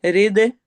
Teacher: रिद दाल पे कलकला होगा